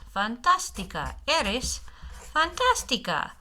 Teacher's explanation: Accent right there to give the accent to give the syllable in the middle the emphasis